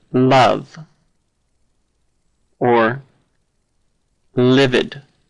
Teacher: the L is right there on the tip of your tongue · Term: clear L